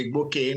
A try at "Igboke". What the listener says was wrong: I don't have W in my name.